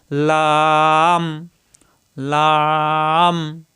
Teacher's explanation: জিহ্বার আগার কিনারা উপরের দাঁতের গোড়ায় লাগবে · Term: সহজ লাম